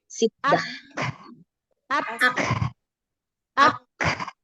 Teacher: Jadi jangan langsung dilepaskan nafasnya, tapi tempelkan dulu pada makhrajnya huruf kaf, yaitu dari pangkal lidah bagian bawah ketemu dengan langit-langit yang keras. Baru lepaskan nafasnya, ya, hams. Lalu, ya, tapi juga syiddah, harus kuat, ya.